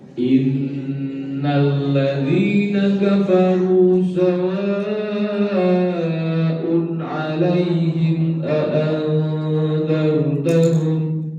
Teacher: sawaun itu panjangnya 5 ketukan. Yang ke-6 sudah masuk ke huruf setelahnya. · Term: mat wajib muttasil